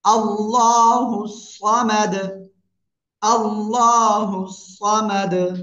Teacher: আল্লাহ শব্দের লামের ডাইনে জবর মোটা আওয়াজে পড়তে হবে।